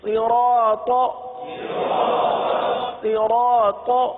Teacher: حروف صاد کو ہم نے ہمیشہ پر پڑھا ہے، کیونکہ حروف مستعلیہ میں سے اس کو ہمیشہ ہم نے پر پڑھا ہے، تو یہاں پر بھی پر پڑھیں گے۔